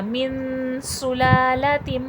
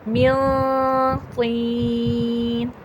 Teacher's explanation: نون ساکن کے بعد حرف مستعلیہ ہے، موٹا حرف ہے، تو اخفا بھی موٹا ہوگا